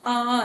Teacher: विवृत स्वर में हमारा आ जाता है जिसमें मुंह जो है बहुत बड़ा खुलता है